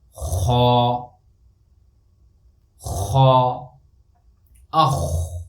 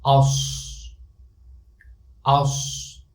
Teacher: I am lifting up my deepest part of the tongue and pronouncing this letter with filled mouth. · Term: huruful isti'la